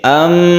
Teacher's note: membacanya yaitu didengungkan atau dipanjangkan ketika tasydid Meme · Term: ghunnah musyaddadah